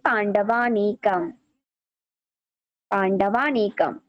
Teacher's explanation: এই পাণ্ডবানিকম উচ্চারণ করার কারণ হচ্ছে এটা, স্বরসন্ধির কারণে এরকম হয়। অ আর অ মিলে যাওয়ার কারণে আ উচ্চারিত হয়